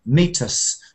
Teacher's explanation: you can unstress, the us can be unstressed